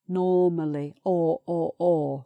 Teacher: so that's an open vowel sound no r